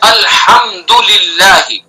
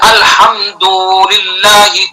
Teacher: دال کو کھینچنا نہیں، جلدی سے پڑھنا ہے